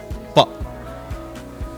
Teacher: both the lips are pressed together